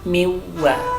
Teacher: nun mati bertemu dengan waw, idgham bi gunnah